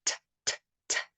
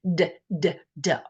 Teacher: so T would be quite quiet TTT and du would be a harder sound d d d or voiced sound